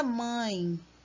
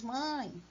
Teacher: ela é nasal, né? Parece que falando pelo nariz, mãe, né? Ficou junto o A e o E.